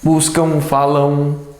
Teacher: o som que se ouve realmente é do ão, como se fosse um aotil. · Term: ditongo